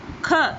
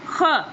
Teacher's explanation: کھ خاندان نہیں ہوتا، کھ، یہ کاف اور ہے کی آواز آ رہی ہے، اس میں آواز آئے گی خ